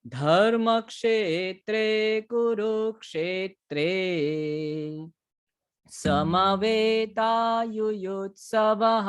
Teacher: तो जैसे ध के ऊपर अभी सबसे शुरुआत करना है ना, तो ध अभी हमने वो बात नहीं की है, अल्प प्राण और महाप्राण। ये जो ध है ना वो महाप्राण का अक्षर है, ठीक है। तो उसके ऊपर वजन देना है, उसके ऊपर ज्यादा प्राण देना है।